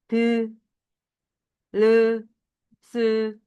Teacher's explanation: 위 잇몸하고 혀 끝이 만나서 나는 소리가 있어